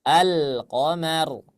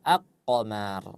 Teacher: maka lamnya dibaca dengan jelas